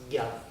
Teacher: Vous pouvez le fermer derrière les dents, et ça donne un DA. Et puis vous pouvez le fermer vers le milieu du palais, et ça donne un GA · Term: consonnes plosives